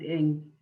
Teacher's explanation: Ing sound is called velar nasal, which means that you curl your tongue up against the back of your mouth and the air comes out of your nose. That's why we call it inga, like the N because it's nasal, so inga.